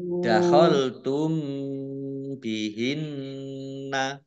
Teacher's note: mim sukun bertemu dengan huruf ba Ikhfa Syafawi dibaca samar-samar